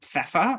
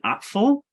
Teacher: you'll notice like P and F, it's that labial and labiodental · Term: PF consonant cluster